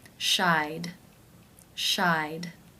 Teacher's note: I as in by diphthong. Therefore, it is case 2, and the ED is pronounced as the D sound.